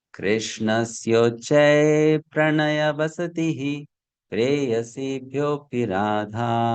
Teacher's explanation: it has four long syllables at the beginning, then five short syllables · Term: Mandakranta